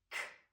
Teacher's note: k is an unvoiced sound, and when we make it, our mouth is open, our tongue's in the back of our mouth, and when it drops down, it kicks out that sound.